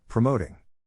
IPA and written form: prəˈmoʊt (PROMOTING)